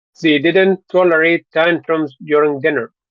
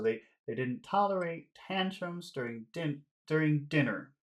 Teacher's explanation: We'll make most of the important sounds high sounds, but then we'll make the final one lower.